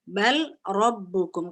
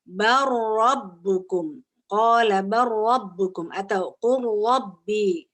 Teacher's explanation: Lamnya hilang, langsung ke ro,